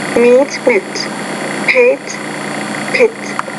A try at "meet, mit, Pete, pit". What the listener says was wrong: Pete, pit. Again, the same thing as lesson number 9. That first sound, the longer vowel, in lesson 11 needs to be longer. So again, it's meet, mit, Pete, pit.